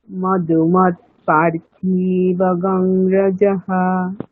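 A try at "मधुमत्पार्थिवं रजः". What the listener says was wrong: হলো না, দেখুন পার, পায় দীর্ঘ আছে, থয় দীর্ঘ নেই। মধুমৎ পার্থিবগম রজঃ।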